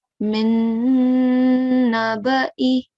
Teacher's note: So you have to hold the nasal sound for 2 seconds, but don't prolong the sound of the fatha. The fatha should only be 1 second. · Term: ghunna